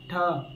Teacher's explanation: ठ ज्यादा ताकत लगता है, इसलिए इसको कहते हैं महाप्राण।